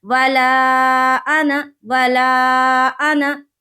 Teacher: تو یہ قاعدہ ہمیشہ یاد رکھے کہ پورے قرآن شریف میں جہاں پر بھی لفظ انا آئے گا وہاں پر الف کو حذف کر دیں گے اور صرف زبر کو پڑھیں گے، الف مدہ کا قاعدہ نہیں کرنا ہے، وہاں پر کھینچنا نہیں ہے